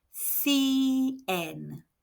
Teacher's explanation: C followed by E or I makes a th sound in European Spanish, and the letter I makes an E sound.